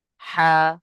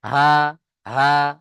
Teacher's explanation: বড় হার আওয়াজটা হালকা হবে হা আরেকটা ছোট হাটা উচ্চারণ হবে হা একদম গম্ভীর আওয়াজে